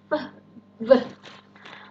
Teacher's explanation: Bibir bawahnya menyentuh bottom part of the upper teeth. V. Maka disebut labiodental.